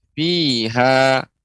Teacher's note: Ketika waqaf, ketika berhenti pada kata fiha, maka dibaca panjang. Matnya ya dua harokat.